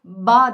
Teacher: bağ derken oradaki Kağıt parçacıklarının uçmadığı ve nefes çıkışının olmadığını çocuğunuza gösterin